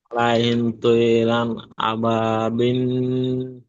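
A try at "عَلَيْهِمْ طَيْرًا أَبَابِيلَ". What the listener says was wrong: বিল নয়, বিল টান হবে, আপনার গুন্না হয়ে আছে।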